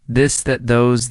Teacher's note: let your tongue touch your teeth lightly but use your voice